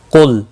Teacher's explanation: قاف مستعلیہ ہے، پر پڑھا جائے گا، لام ساکن کو ہلانا نہیں۔